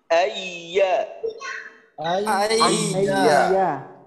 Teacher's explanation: তাসদিদের প্রথম উচ্চারণটা করার সময় ইয়া যে মাখরাজ থেকে উচ্চারিত হবে এইটা মাখরাজের সাথে সম্পর্কটা একেবারে দুর্বল থাকবে। কারণ আপনি যদি মাখরাজের সাথে উচ্চারণটা শক্তিশালী করতে চান, অর্থাৎ চাপ দিতে যান, তখন দেখা যাবে আপনি আওয়াজ চালু রাখতে পারবেন না, আওয়াজটা শক্ত ধরনের হয়ে যাবে।